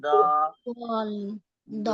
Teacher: हमारी जबान की करवट कहाँ जा रही है, ऊपर की दाईं तरफ की मसूड़ों से लग रही है, तो आवाज कैसे आएगी, द। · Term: दाद की अदायगी